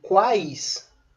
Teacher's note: Então, em quais, a leitura, a pronúncia é uma só. Não há interrupção entre a vogal e a semivogal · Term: tritongo